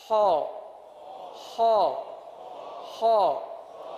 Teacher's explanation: ख ख ख ख हलक से ये आवाज निकलेगी